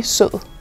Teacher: der er stød på n i grøn og stød på d i sød